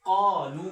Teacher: الف قاف سے پہلے الف ہے، الف ساکن ہے، اس سے پہلے زبر ہے، تو یہ الف کیا ہوگا، روف مدہ ہوگا، تو قا تھوڑا ایک الف جتنا اس کو لمبا کریں گے۔